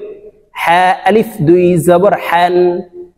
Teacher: হলকের শুরু থেকে হা উচ্চারণ করতে হবে, বাতাস বের করে উচ্চারণ করতে হবে।